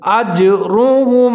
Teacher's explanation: آپ نے قلقلہ کرنا ہے، آواز کو ڈبل کرنا ہے، اجرهم، را کے اوپر پیش ہے، اس کو موٹا کر کے پڑھنا ہے · جیم کے اوپر آپ نے قلقلہ کرنا ہے، آواز کو ڈبل کرنا ہے